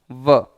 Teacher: ऊपर के दांत नीचे के होठ को स्पर्श करते हैं व शुद्ध उच्चारण करेंगे व तो इसका मतलब दांत और होठ